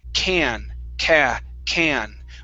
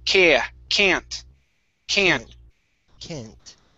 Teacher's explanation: When I say can, okay, it's a little more open. Ca, can. But when I pronounce can't, it's a little more nasally.